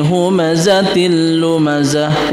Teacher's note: Humazatil lumazah ini sama kasratain bertemu dengan lam, itu idgham bila gunnah.